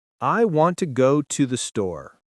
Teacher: Notice how we stress want, go, and store. The small words to, and the are weak.